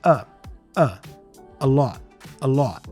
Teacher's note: the article a before lot also has the schwa sound here